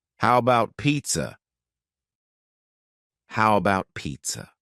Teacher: The first A in the word about is gone. It's just missing. We say, how about pizza? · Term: reduced